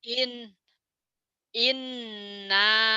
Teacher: gunah itu dibacanya nyamber dobel dengung ke hidung dan ada panjangnya